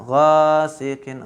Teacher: Gha di sini adalah mat tabi'i. Dibaca sebanyak 2 harokat atau 1 alif.